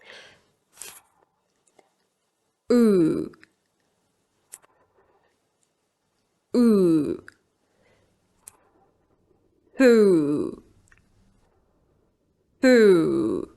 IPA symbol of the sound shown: θ, uː